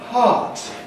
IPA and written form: hɑːt (heart)